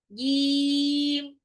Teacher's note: Kenapa? Karena jim itu punya sifat jahr. Tahan nafas ketika mengucapkannya. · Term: sifat jahar